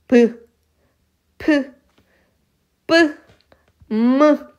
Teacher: 우리가 입술을 두 입술을 붙였다 떼면서 나는 소리. 순이라는게 입술 순자고 그게 두 개 있다라고 해서 양수음이라고 하는데 브ബ്브이 소리가 입술에게 막아졌다가 터지면 그것을 우리는 입술 소리라고 합니다.